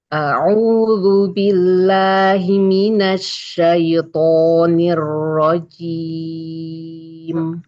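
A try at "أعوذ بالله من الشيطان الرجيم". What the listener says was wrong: Sedikit masih terangkat. Tadi yang pas satu kata udah nggak keangkat. Ketika digabung masih. Kemudian hamzanya tipiskan lagi. A'udzu billahi minasyaitonir rajim.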